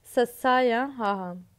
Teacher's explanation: ਅੱਗੇ ਆਉਂਦਾ ਸੰਘਰਸ਼ੀ, ਜਦੋਂ ਹਵਾ ਸੰਘਰਸ਼ ਕਰਦੀ ਨਿਕਲਦੀ ਆ।